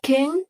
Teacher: Try saying king, you will notice the back of the tongue lifting twice.